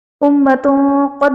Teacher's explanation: امتوں قد میں تا کے اوپر دو پیش کی تنوین کے بعد حروف اخفاء میں سے قاف آ رہا ہے، تو یہاں پر اخفاء کا قاعدہ ہوگا، یعنی تنوین میں ہم غنہ کر کے پڑھیں گے۔